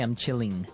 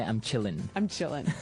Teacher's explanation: you have to drop the G